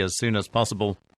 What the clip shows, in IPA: æz suːn æz ˈpɒsəbl